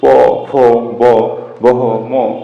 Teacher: যেমন যে বর্ণগুলো উচ্চারণের সময় আমাদের এই ঠোট বা উষ্ঠ এই উষঠ বা ঠোটের ব্যবহার বেশি হয় সেগুলোকে বলা হয় উষ্ঠ বর্ণ। যেমন প দুইটা ঠোট মিলে যায়